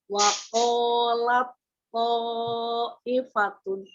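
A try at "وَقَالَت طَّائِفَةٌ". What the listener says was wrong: Ya, to-nya panjangkan lagi 4 sampai 5 harakat. Jadi lamnya jangan terikut tebal karena udah mau to-nya ketemu to-nya tebal, jadi lamnya terikut tebal ya, jangan terikut tebal. Waqalat ifatun.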